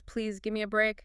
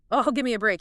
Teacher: Sharp and falling intonation. · A low pleading tone.